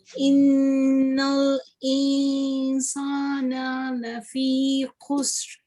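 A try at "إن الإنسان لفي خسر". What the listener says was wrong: You just need to make the ikhfaa more obvious like this. Innal insana lafi khusr.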